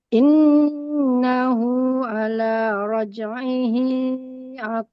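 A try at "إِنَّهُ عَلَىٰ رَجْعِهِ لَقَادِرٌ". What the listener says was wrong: Rnya gak boleh tebal.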